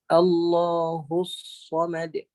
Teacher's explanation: Baik, yang pertamanya, sad ni dia ada satu persamaan dengan huruf sin, iaitu dia ada sifat yang dipanggil hamas, iaitu terlepas angin, terlepas nafas ketika menyebut huruf sad